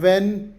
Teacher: ಇಲ್ಲಿ ಕೇವಲ ಡಬ್ಲ್ಯೂ ವಾ ಧ್ವನಿ ಮಾತ್ರ ಕೇಳಿಸುತ್ತದೆ. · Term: ಎಚ್ ಸೈಲೆಂಟ್